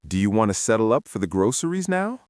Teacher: Do you want to settle up for the groceries now? The word now goes up. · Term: upward intonation